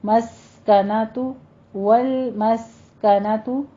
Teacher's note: مذلۃ، مذلۃ تھوڑا سا رک کے سختی کر کے پھر آگے چلنا ہے. والمسکنۃ میں بھی لام اور سین کو ساکن کرنا ہے، سین پہ سیٹی کی آواز آنی چاہیے